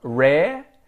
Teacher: Rarely, I pronounce the first R, rare, but I ignore the second one. So that's actually part of the vowel in Australian English.